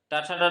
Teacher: टाठा टाठा बोला जाता है तो कंठ तालु मूर्धा, तो मूर्धा से